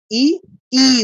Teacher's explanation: দুটো কিন্তু উচ্চারণ স্থান একই। জাস্ট একটা একটু ধরে রাখলাম এজন্য দীর্ঘ হয়ে গেছে। · জিহ্বাটা তালুতে স্পর্শ করবে। ই উচ্চারণ করার সময় দেখুন একদম তালুতে প্রেসার খাচ্ছে। স্বরটা, সাউন্ডটা তালুতে প্রেসার দিচ্ছে। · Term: দীর্ঘ ই, তালব্য বর্ণ